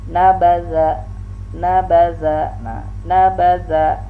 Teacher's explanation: Nah, nabaza. Nah, za ini rakhawah ya, ujung lidah dengan ujung gigi yang di atas